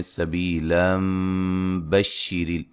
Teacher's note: نون تنوین کا اقلاب ہوگا، ٹھیک ہے جی، غنہ کر کے پڑھیں گے، نون کو میم سے بدل دیں گے